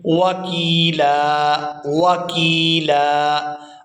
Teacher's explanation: یہاں پر یا ساکن ہے اور اس سے پہلا جو حرف کاف ہے اس کے نیچے ہے زیر، تو یہ یا مدہ ہے، اس کی وجہ سے کاف کو 1 الف یعنی 1 سیکنڈ مقدار کے کھینچ کے ادا کریں گے